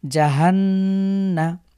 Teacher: পরবর্তী শব্দ লক্ষ্য করুন জিম জবর যা হা নুন জবর হান আমরা গুন্না করবো কারণ নুনের উপরে তাদিদ হয়েছে